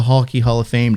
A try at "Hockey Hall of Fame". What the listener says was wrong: Yeah, you said Hulky. Hulky Hall of Fame.